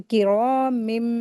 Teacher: तो यहां पर इकलाब का रूल अप्लाई हो रहा है। तो नून की आवाज को मीम में बदल देंगे। तो किरा मी इस तरीके से गु्ना करके पढ़ेंगे।